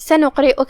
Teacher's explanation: کلمت سنقرئك میں یہاں حرف القاف ہے جو کہ اس پہ جزم ہے، تو یہاں حکم ہوا قلقلہ. قلقلہ کا معنی ہے حرف ساکن کو ہلانا، تو ہم یہ قاف کو ہلاتے ہوئے یہ کلمہ کو ادا کریں گے